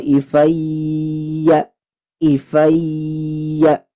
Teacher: ini huruf ya yang bertasdid maka dengungnya sempurna